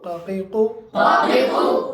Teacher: कौवे के मुत्तसिल ज़ुबान की जड़ से काफ पढ़ा जाता है, और काफ से थोड़ा सा मुंह की तरफ हटकर कौवे के बाद ज़ुबान की जड़ से काफ निकलता है।